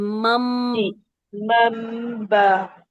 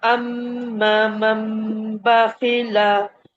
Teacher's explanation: नून साकिन की आवाज को खत्म करके मीम में हमने कन्वर्ट किया, फिर हम उसके जी बाद बा के लिए अपने दोनों होंठ खोलेंगे ताकि जी आगे जो बा है उसको भी अदा कर सकें।